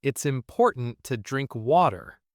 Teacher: You used the stop T in important and the flap T in water.